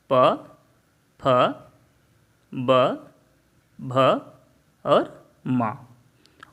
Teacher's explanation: उ का अर्थ है उवर्ण और पु से पवर्ग के अंतर्गत आने वाले सभी वर्ण। इसे हम इसका उच्चारण स्थान ओष्ठ है